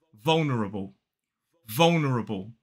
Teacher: four syllables the stress falls on the first so it's V the dark L then the second syllable is